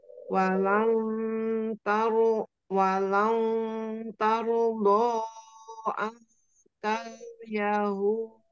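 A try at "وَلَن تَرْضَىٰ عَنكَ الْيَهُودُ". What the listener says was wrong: Ya, huruf ainnya naikkan lagi ke tenggorokan tengah, Kemudian tadi di walang, nah ikfa-nya ikfa tipis. Jadi jangan walang, lau, tapi walang, lau. Jadi jangan ditarik ke tenggorokan samarnya, tapi dimajukan, suaranya dikedepankan mendekati ke ta. Walang, lau.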